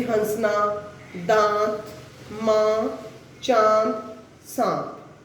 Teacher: अनुनासिक का जो शब्द होते हैं उनका उच्चारण किसके द्वारा किया जाता है? मुख और नाक के द्वारा।